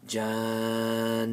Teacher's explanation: noon has a tajdeed, so we have to prolong the sound of the noon. Jan. And you gave it a temporary sukoon.